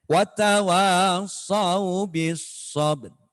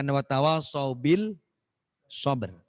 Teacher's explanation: Alif lamnya tidak terbaca. Langsung masuk di hurufnya. Makanya bacanya watawassaw bis sabr. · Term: al-syamsiyah